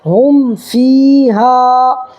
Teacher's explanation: اس کو ظاہر کر کے پڑھیں گے، میم کو ظاہر کر کے پڑھیں گے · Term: اظہار شفوی